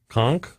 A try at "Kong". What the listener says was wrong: It's a G. It's a G at the end.